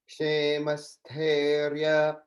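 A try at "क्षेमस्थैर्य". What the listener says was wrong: In sthairya, it's more like an I sound. It sounded like you were saying a little more like A. So just keep in mind that's I, sthairya.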